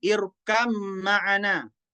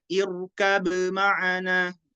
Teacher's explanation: Harus idgham, ba-nya dimasukkan ke huruf mim.